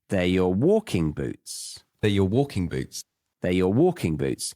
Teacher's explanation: And I'm stressing walking because they are not just his shoes, they are the shoes that he does this action in.